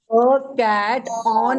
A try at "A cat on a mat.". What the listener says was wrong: आपने बहुत जल्दी बोला।